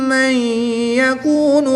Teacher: نون ساکن کے بعد یا حروف یرمالون میں سے دوسرے کلمے میں ہے تو یہاں پر ادغام مع الغنہ ہوگا، یعنی غنہ کر کے پڑھیں گے، نون ساکن کو یا مشدد میں مدغم یعنی شامل کر کے پڑھیں گے اور میم کی زبر کو یا مشدد کے ساتھ ملائیں گے۔